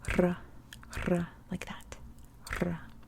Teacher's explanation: And then we move on to R, which, if you know my language series, R is the worst letter in every language. In Lithuanian, the R is rolled. So it's just a simple R, R. So you gotta use your tongue and trill it.